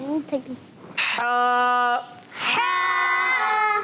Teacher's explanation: हा अदा होता है कहाँ से? हलक के दरमियान वाले हिस्से से।